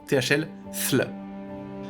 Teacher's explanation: avec un TH qui a la langue entre les dents